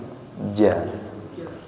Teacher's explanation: huruf jim pengucapannya tanpa disertai dengan angin